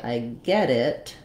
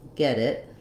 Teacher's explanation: use it as a flap when we link that final T sound. So that's just like when we say, I get it, it sounds like get it.